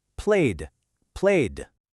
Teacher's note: The verb play ends with a vowel sound which is voiced. You can feel it vibrate. So, we add the D sound.